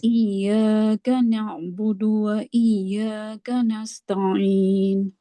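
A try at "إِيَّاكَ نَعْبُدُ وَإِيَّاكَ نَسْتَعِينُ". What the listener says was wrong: Lagi, tebalin lagi. Tebalin. Tekan lagi. Iya-nya ini.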